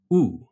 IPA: ʊu